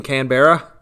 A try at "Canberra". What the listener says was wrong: Canberra, but yeah. Yeah, but Canberra's actually 2 syllables, so...